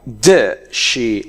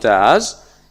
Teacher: It is weak, and we pronounce it like does she, not does.